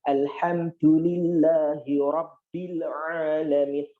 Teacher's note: Oh, pakai ha, bukan pakai kaf, bukan al-kamdu, atau bukan alhamdu, tetapi alhamdulillahi rabbil ra. Oh, karena ra berharokat fathah, maka saya harus tebalkan